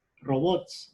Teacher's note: Fuerza de voz en la sílaba bots.